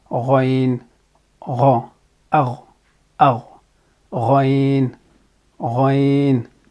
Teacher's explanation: So we are constricting the pathway between the back of the tongue and the velum. Okay, and it creates friction when the air passes through.